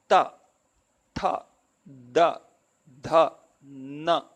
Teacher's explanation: In all of them, the tongue is touching the teeth.